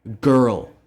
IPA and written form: gəɹl (girl)